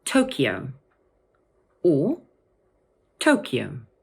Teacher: In English, this word can either have three syllables and be pronounced Tokyo, or two syllables, Tokyo. So the sound in the middle of the word is slightly different, but the stress is always on the first syllable.